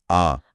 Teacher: एक है विवृत यानी पूरा खुला। इसमें सिर्फ एक ही स्वर आता है।